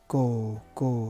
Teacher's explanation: it's a pure vowel it doesn't have any glides